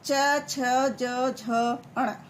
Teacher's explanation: च वर्ग क्या होता है? ये होता है तालु, यानी कि जो जीभ से, तालु से निकलता है।